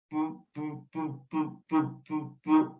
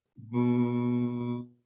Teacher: el bu sí se puede alargar manteniendo el sonido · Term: sonoro